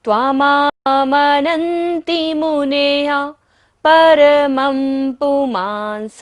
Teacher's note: प फ ब भ म यदि बिंदी के बाद आता है तो बिंदी का उच्चारण क्या होता है, म।